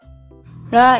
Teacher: जीभ को मूर्धा से छूते हुए बाहर की ओर शीघ्रता से फेंक कर बोलते हैं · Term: उत्क्षिप्त व्यंजन